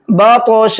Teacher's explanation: اس طا کو موٹا بھی کریں گے اور ساتھ ساتھ اس میں قلقلہ بھی کریں گے